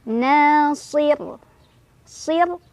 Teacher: Nasir Sir rnya dibaca secara tarqik karena r-nya disukunkan dan kebetulan huruf sebelum ro sukun adalah kasrah sehingga r-nya tipis